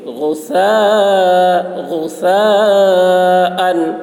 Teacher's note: غین کی آواز موٹی ہوگی، ثا کی آواز باریک ہوگی، ثا میں مدے کھینچیں گے.